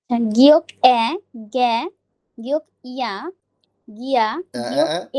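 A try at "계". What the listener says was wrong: এটা ইয়া না, ইয়ে, ইয়ে মানে গিয়ে। হুম। না, গোয়ে না, ওয়ে।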